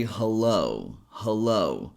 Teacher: In this word, we emphasize the second syllable. So we're going stronger on the second syllable, which is low.